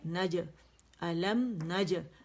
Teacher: نون پہ زبر ہے اور جیم سے ملے گا، اور جیم پہ باریک قلقلہ ہے